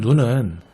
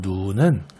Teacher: 사람이 보는 눈은 짧게 발음 하지만 하늘에서 내리는 눈은 길게 발음하는 것과 같은 경우에요